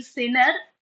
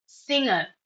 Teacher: G is partially silent, not fully silent because you are not saying sinner, singer. So that nasal sound can be heard, but not your vocal sound.